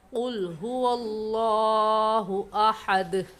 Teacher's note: ये हरूफ कलकला में से है दाल, इस पर कलकला कर कर पढ़ेंगे